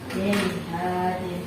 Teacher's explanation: Tidak boleh ada dengung sama sekali, harus dibaca dengan jelas. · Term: bacaan idhar